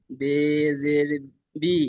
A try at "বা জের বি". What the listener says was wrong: বে নয়, বা জের বি।